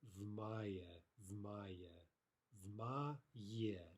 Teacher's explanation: It's not an extra syllable. There's no pause after the v. So we get, again, vmaya, vmaya, vmaye, two syllables, vmaya.